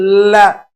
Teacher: हमारी जिह्वा ल के उच्चारण में भी मसूड़ों की तरफ जाती है। देखिए ल, मसूड़ों को पूर्ण रूप से छूकर यह उच्चारण होता है, इसलिए इसका एक नाम और हो जाता है वर्ष ध्वनि। · अब जिह्वा के बगल से जो वायु निकली, बगल को पार्श्व कहते हैं, इसलिए ल का एक नाम है पार्श्विक ध्वनि। ल के बारे में एक और है, आप जब ल बोलेंगे तो हमारी जिह्वा ल के उच्चारण में भी मसूड़ों की तरफ जाती है।